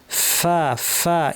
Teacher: দাঁত ঠোঁটের উপর লাগিয়ে ফ্যাস ফ্যাসে আওয়াজ, প্রচুর আওয়াজ, প্রচুর বাতাস।